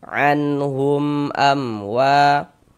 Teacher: Hukumnya izhar syafawi. Maka dibaca jelas ya, tak berdenggung. Baca pendek saja.